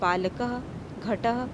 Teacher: विसर्ग का उच्चारण आधा ह के समान होता है